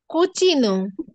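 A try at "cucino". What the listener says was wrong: ব্রাভিসিমা।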